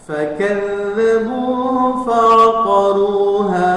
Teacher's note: Sama fakadzabuhu, za-nya adalah ditasdid, itu rakhawah, mengalir.